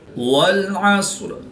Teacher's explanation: بسم اللہ الرحمن الرحیم۔ والعصر، صاد حروف مستعلیہ میں سے ہے تو اس کو پورے موٹا پڑھیں گے